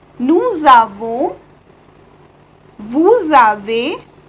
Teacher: we are merging the sound s with a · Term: liaison